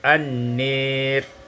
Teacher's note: imalatu fathin nun wal alif, diimalahkan fathah nun dan alif sehingga kita baca an-nir.